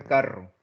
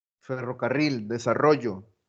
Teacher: cuando yo digo carro es esa se llama vibrante múltiple